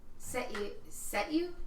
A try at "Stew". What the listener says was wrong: Stew. There's no E. It's SHTYW.